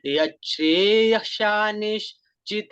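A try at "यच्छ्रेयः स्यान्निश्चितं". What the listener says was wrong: और शिष्य यहाँ पे यत् श्रेयस्यान निश्चित नहीं है, निश्चितम। निश्चितम ब्रूहि, ये बड़ा इंपॉर्टेंट श्लोक है बच्चों, इसीलिए इसको बिल्कुल, इसका उच्चारण भी बिल्कुल आपको हृदयस्थ भी होना चाहिए और उच्चारण इसका बिल्कुल ठीक होना चाहिए।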